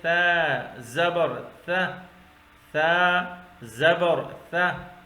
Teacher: ذال بھی ایک اور ثا بھی اسی مخرج میں ادا ہو، دونوں باریک لفظ ہیں، دونوں سیٹی کے بغیر۔ ثا زبر ثا، ثا سا نہیں پڑھیں گے، سیٹے والے نہیں پڑھیں گے، بلکہ ثا پڑھیں گے۔